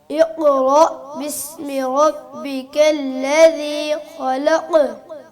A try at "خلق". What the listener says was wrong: ठीक है, आप काफ को बहुत पीछे से जाके निकालते हैं, काफ को जो जबान के आखिर से निकालते हैं। खलक, इसको थोड़ा झटका देने से